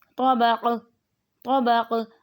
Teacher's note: قاف پہ قلقلہ کریں گے کیونکہ جب ہم وقف کریں گے تو یہ ساکن بن جائے گا